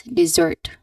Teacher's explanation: the stress should be on the second second syllable